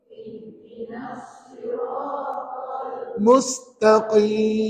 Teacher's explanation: Qaf, maka pangkal lidah tu tekan hampir ke anak tekak kat dalam. Jadi bunyinya ke dalam lagi lah. Dan qaf ini huruf isti'la.